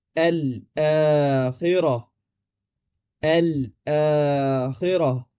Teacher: آپ سب سے پہلے لام کہیں گے، پھر حمزہ، اور آخر میں الف کو 2 حرکات کے مد طبیعی کے ساتھ ادا کریں گے، یعنی یہاں مد موجود ہے۔